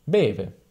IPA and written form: ˈbeve (beve)